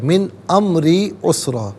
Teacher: من میں غنہ نہیں ہوگا نون ساکن پر، کیونکہ آگے حرف حلقی آ رہا ہے